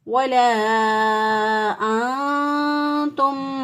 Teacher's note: ये जो हमने किया है, जिस तरह उर्दू में हम कुम वाँ पढ़ते हैं, कुम वाँ, तो जो वाँ की ये जो आवाज़ है, ये जो नाक में आवाज़ ले जाना, ये जो है इसको कहते हैं गुन्ना करना, इख्फा करना। नून की आवाज़ को छुपा कर गुन्ना करते हुए, नून गुन्ना जो है वो करते हुए इसको अदा करना।